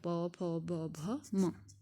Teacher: इनका उच्चारण स्थान क्या है ओष्ठ